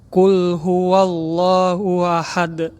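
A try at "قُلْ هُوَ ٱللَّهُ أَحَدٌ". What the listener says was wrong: Ku-nya Mas. Ku ya. Ku itu enggak ada suara ku. Hilangkan. Qul huwallahu ahad.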